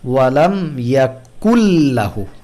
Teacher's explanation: নুনের কোনো অংশই আর ইদগামের মধ্যে বাকি নেই। · নুন সাকিনের পরে আমরা হলো যখন লাম আসে তখন ইদগাম করে পড়ি, এবং সেই ইদগামের সাথে গুন্না থাকে না, গুন্না ছাড়া ইদগাম।